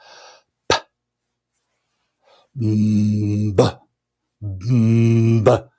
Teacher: The vibration comes first, the lips kind of stop it, and then release it.